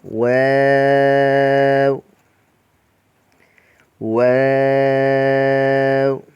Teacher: واو کو دونوں ہونٹوں کی گولائی سے ادا کیا جاتا ہے